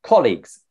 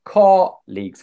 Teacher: So it's two syllables. English, we say colleagues. The stress on the first syllable, colleagues. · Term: syllable stress